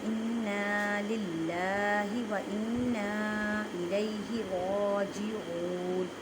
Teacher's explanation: عین کو ایک الف کی مقدار میں کھینچ کر پڑھیں گے کیونکہ واو ساکن سے پہلے پیش ہے